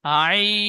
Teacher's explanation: আই, ঠিক এমন পড়বেন 3 আলিফ টান দিয়ে